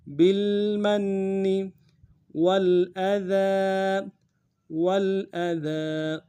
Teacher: بالمن والاذى، والاذى، واو کو لام ساکن کے ساتھ ملانا ہے، غنہ نہیں ہوگا، حمزہ کو نرم سے ادا کریں گے، دال کے اوپر کھڑا زبر ہے، ایک الف دال میں کھینچیں گے